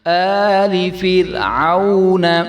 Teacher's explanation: یہاں پہ را میں تکرار نہیں ہونا چاہیے